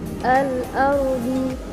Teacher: Selanjutnya pada kalimat al-ardi ada ro tafkhim yang dibaca tebal karena ro sukun jatuh setelah harakat fathah.